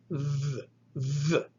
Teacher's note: So it is th, th. You place your tongue against your teeth, and you're going to kind of squeeze the air out through with some breath. It's aspirated, but you're also engaging the vocal cords. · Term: delta